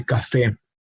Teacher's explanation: has its emphasis on the last syllable